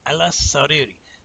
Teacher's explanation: So when it's a sun letter, you're going to take one of those S's, one of those sins, and keep it with Ayla. And you're going to say Aylas as one syllable.